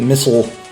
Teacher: I've always pronounced it missile. With that schwa in there.